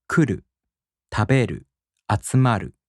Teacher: But for verbs, you don't have to worry about these patterns because in the downstep type verbs, the accent falls on the second to the last mora. For example, 来る、食べる、集まる. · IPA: [kuꜜru] [tabeꜜru] [atsumaꜜru]